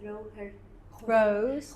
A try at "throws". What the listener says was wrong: That was without the S. You didn't say it with the S, but you pronounced throw better.